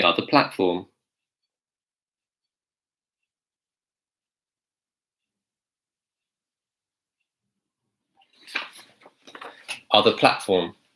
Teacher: I'm also using the glottal stop T